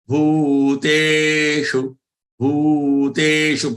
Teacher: Bhu and te, they are long ones and shu is short.